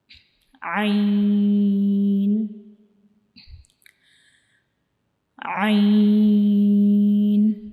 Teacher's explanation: عین کو ہم اپنے گلے کے درمیان والے حصے سے پڑھیں گے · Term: عین کا مخرج